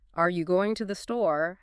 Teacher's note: But are you going to the store has a rising intonation at the end, indicating a question.